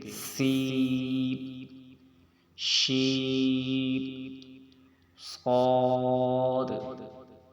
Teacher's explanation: یہ حروف یہ وہ حروف ہیں جس میں سیٹی ہوتی ہے۔